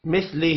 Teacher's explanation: ہا کے نیچے کھڑی زیر ہے، ایک الف کے برابر کھینچ کر پڑھنا ہے۔